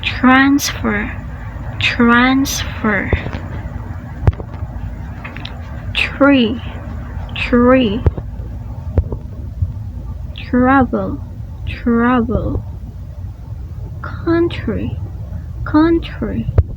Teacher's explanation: If T is followed by an R, do not use true T. Instead, use the combination CH.